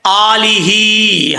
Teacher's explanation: حمزہ کے اوپر کھڑا زبر ہے، ایک الف کی مقدار لمبا کریں گے. آگے ہا ہے، ہا کے نیچے کھڑی زیر ہے، اس کو بھی ایک الف کی مقدار لمبا کیا جائے گا.